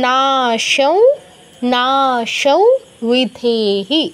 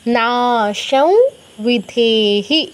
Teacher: আমি কিন্তু উ এর মতো উচ্চারণ করছি অনুসারের জায়গায়, আর নাসিকার প্রয়োগ করছি, না সৌ বিদেহী। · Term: ও হসন্ত চন্দ্রবিন্দু